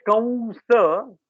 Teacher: that Anuswara will be a very completely nasal sound, no involvement of anything else, Okay. completely nasal.